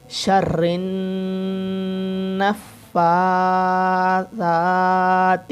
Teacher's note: یہاں پہ نون مشدد کا غنہ ہوگا. شین را سے، را نون سے، نون دوبارہ پھر فا سے.